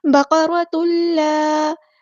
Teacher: بقرۃ اللہ، با ہمارا light letter ہے باریک پڑھیں گے۔ قاف ہمارا ہیوی لیٹر ہے پورا ادا کریں گے، را ہمارا ہیوی لیٹر ہے پورا ادا کریں گے۔